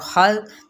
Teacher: खा को पुर करते हुए जाल को नरमी से